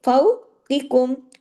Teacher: یہ واو لین ہے، اور قاف ہیوی، لیکن اگلا کاف کم والا باریک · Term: کاف باریک